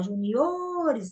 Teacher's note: juniores, então o O é o mais forte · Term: paroxítona